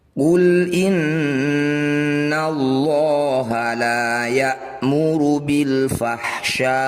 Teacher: Ya, mad tabi'i bertemu dengan huruf hidup dan dihentikan, jadilah bacaan mad arid lis sukun. Cara bacanya, sya ini panjangkan 6 harokat, huruf terakhir sukunkan.